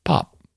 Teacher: here in the Ozarks, we don't do the little pop